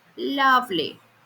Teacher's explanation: The fall happens on love and lee is said in a low pitch. That's the tail.